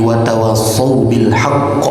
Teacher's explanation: qaf itu adalah huruf qalqalah. Ditambah ini qalqalahnya memiliki tasydid. Ditambah lagi berada pada ujung ketika kita berhenti. Maka qalqalahnya bukan sembarang qalqalah.